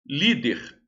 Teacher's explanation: Líder, a sílaba tônica é li.